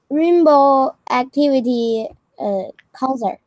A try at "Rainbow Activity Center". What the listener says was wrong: Not concert, this one's center. Good try, though.